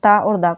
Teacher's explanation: इनका उच्चार स्थान मतलब दंत होता है